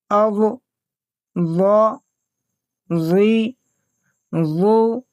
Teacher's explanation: حرف ضاد کا مخرج ہے زبان کی کروٹ اور اوپر کے دانتوں کی جڑ۔ یعنی ہم جب اپنی زبان کی سائیڈ کو اوپر کی داڑھوں سے مضبوطی سے جماتے ہیں، چاہے وہ دائیں طرف کے داڑھوں سے ہو یا بائیں طرف کے داڑھوں سے، یعنی دونوں میں سے کسی ایک سے، تو ضاد ادا ہوتا ہے۔